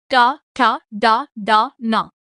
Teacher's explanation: మూర్ధన్యాలు అంటే నాలుకను వెనక్కి మలిచి పలికే అక్షరాలు